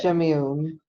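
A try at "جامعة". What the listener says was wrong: Jamiatun. Jamiatun. Jamiatun. Remember, it ends with tamarbuta, so you get that ta sound. And then you have un from the New Nation or Jamiaton, a university.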